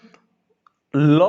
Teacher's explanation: क्या होती है ल करके ऐसे ऊपर उठती है तो उसके जीभ के साइड से हवा निकल जाती है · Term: पार्श्विक व्यंजन